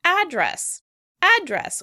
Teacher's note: In American English, the word will be pronounced address, address, with stress on the first syllable.